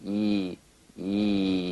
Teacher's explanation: the y buzz is the sensation of the e sound as a buzz or vibration on the gum ridge right here on the gum ridge right above the front teeth you feel a little buzz of the e e there concentrate